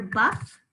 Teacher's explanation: i can hear buff very clearly that short u sound it doesn't sound like a short a does it lo and we can hear that um open syllable